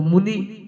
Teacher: मु छोटा है और नी बड़ा है तब तो मुनि कहलाएगा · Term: रस्म को रस्म